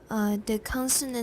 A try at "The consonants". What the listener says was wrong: Not the. Once more. Your S. The consonants.